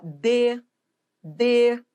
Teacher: embora o d tenha timbre fechado ele é tônico não confunda timbre com tonicidade